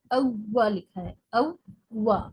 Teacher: वाऊ यानी दो मरतबा है, लेकिन उमूमन लोग इसको एक ही बार पढ़ देते हैं और बहुत सख्ती के साथ तजदीद को अदा नहीं करते, क्योंकि उस हर्फ की बनावट ऐसी है कि वो मुंह में थोड़ा मशक्क़त और मेहनत से अदा होता है।